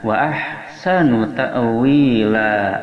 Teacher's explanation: Wa ha berada pada tengah tenggorokan makharijul hurufnya.